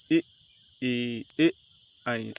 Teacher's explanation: तो हमारा इसमें आगे जीभ का आगे वाला भाग हमारा काम करता है, उसे अग्र स्वर कहते हैं